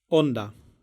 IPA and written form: ˈõn̪.d̪a (onda)